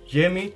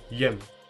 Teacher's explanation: Also some people in Kosovo reduce jemi to jem.